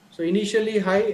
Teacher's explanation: So initially high and finally the tone falls down, right? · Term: falling tone